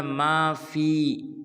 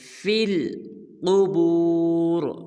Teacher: فا کو آگے لام کے ساتھ ملائیں گے فی القبور، قاف کو بھی پر ادا کریں گے اور وقف میں را کو بھی پر ادا کریں گے۔